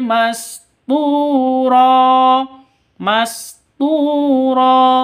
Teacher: Tu panjang dua ketukan karena ada waw mati diawali dengan dhamma mad asli atau mad tabi'i. Ro awalnya ron karena berhenti maka tanwinnya berubah menjadi fathah.